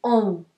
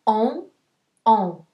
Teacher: when you say ah, ah, with a little tail, you say on. It is a nasal sound, on, on. Kind of in English like you would say only, only.